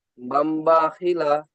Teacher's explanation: >> তাই নন সাকিনের সাকিন মিমের দ্বারা পরিবর্তন করেন মিমের দ্বারা পরিবর্তন করে এক আলিফ পরিমাণ টান দিয়ে গুনা করে পড়তে হয়